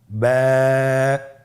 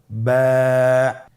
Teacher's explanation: বা হরফে টান হবে, এক আলিফ টান।